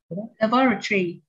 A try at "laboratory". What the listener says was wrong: Good. That is good.